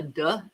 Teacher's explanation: a lot of Newfie accents, they don't pronounce the TH sound. They do a duh instead of the th in parts of Newfoundland.